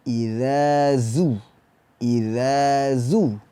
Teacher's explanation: Za yang pertama, zal, itu makhrajnya berada di ujung lidah, bertemu dengan gigi seri atas.